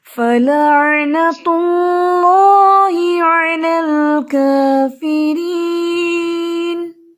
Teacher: اللہ کا نام یہاں پہ ہیوی کیونکہ اس سے پہلے ضمہ ہے، یعنی کہ پیش ہے